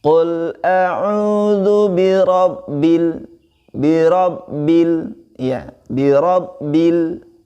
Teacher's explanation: lamnya tidak memantul ya, tidak memantul sehingga langsung kita kunci huruf lamnya. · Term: alif lam qamariyah